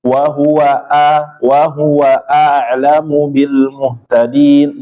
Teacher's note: huruf hamzah dia benar-benar berdiri, bacaannya ya terputus, dijaharkan